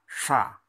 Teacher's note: untuk yang desis adalah sha, ujung lidah diangkat, tebal jadinya